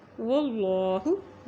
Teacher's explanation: اللہ کے نام سے پہلے زبر آ گیا ہے، اس لیے اللہ کا نام موٹا ادا کریں گے